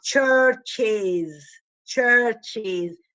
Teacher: same manner of articulation you cannot do it it's impossible therefore we have to produce an insertion that is insert a vowel to break the cluster of two consonants